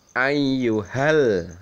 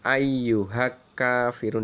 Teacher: lam sukun bertemu dengan huruf qomariyah, maka lam sukunnya itu harus dibaca jelas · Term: al-qomariyah